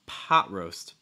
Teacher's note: when you say pot roast, you want to stress that first syllable